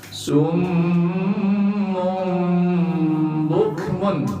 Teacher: Tanwin berubah jadi mim suaranya. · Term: iqlab